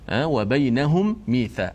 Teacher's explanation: Cara bacaan adalah wajib kita mengidghamkan huruf mim yang mati yang pertama tu ke dalam mim yang kedua yang berbaris dengan sempurna, masuk sempurna, berserta kita panjangkan gunnah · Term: idgham mithlain